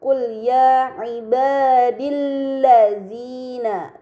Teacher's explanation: alif lam bertemu dengan lam ini dinamakan alif lam syamsiah karena Hamzah wasal pada alif lam dibaca fathah dan lam pada Lam Syamsiah tidak dibaca